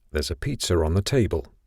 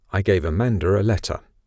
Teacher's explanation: these rs were not written but they are quite common in connected speech for non-rhotic speakers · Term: intrusive r's